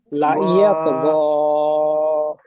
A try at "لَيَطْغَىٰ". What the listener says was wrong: লা টানবেন না, লায়াত গ।